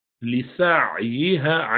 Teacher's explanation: عین درمیانہ گروپ میں سے ہے، بینیہ توسط والا، تو اس کو جھٹکے سے ادا نہیں کرنا